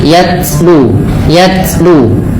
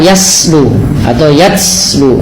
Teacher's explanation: sifat huruf ta yang paling menonjol dalam ketika dia sukun adalah sifat syiddahnya, yaitu tertahannya suara. Dan langkah kedua yaitu adalah sifat hamasnya, mengalirnya nafas.